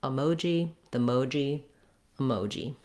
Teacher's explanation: letter O in American English, and in this word emoji, is a diphthong. We're gliding and holding that O for a long time.